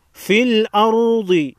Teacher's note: را پر جزم ہے، اس سے پہلے حرف حمزہ پر زبر ہے، را کو موٹا پڑھیں گے